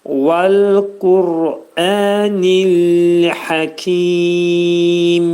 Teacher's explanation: Həqi ki burda dörd hərəkə miqdarında uzadırıq və mim hərfində izhar edirik. Ağız yumulur və mim hərfi dodaq hərfidir.